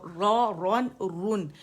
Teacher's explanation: زبان کی جڑ اٹھائیں اور را رون رن, اور اٹھی ہوئی زبان کی جڑ سے آپ رن ادا کریں گے